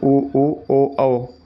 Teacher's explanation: जिन स्वरों के उच्चारण में जीभ का पिछला हिस्सा पश्च भाग ऊपर उठता है, वह पश्च स्वर कहलाते हैं।